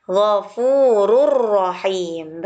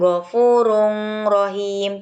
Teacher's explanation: Tanwin dhammah atau dhammah tanwin bertemu dengan huruf ro, dilebur hurufnya, huruf ro-nya dilebur tanpa dengung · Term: idgham bila gunnah